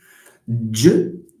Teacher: So j is a voiced alveopalatal.